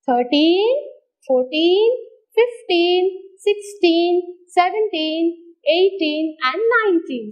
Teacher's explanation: these teen words get the stress on teen only